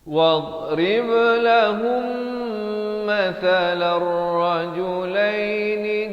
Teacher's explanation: mim mati bertemu mim kena dengung dua harakat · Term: idgham mislan saghir